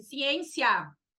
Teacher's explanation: Semivogal, porque é tipo vogal, mas não é vogal, é mais ou menos vogal. É quase uma vogal, se apoia na vogal, mas tem um som que dura menos no tempo